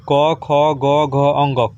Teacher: क कंठ से बोला जा रहा है, तो क ख ग घ, तो अकह कह दीजिए, अ आ भी आ जाता है, अ आ क ख ग घ ह, ये सब आ गया आपको कंठ से बोलने वाला।